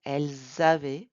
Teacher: Don't forget the liaison, elles avaient in front of the vowel.